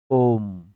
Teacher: ओम ऐसे बोलते हैं, तो उसमें ना तो वो हर्षव स्वर है, ना वो दीर्घ स्वर है। हर्षव और दीर्घ से भी ज्यादा समय लगा है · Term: प्लुत